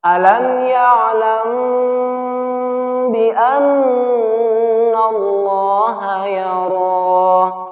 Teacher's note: Ini tata cara membaca ikhfa syafawi. Jadi ditahan 2 harokat disertai dengan dengung.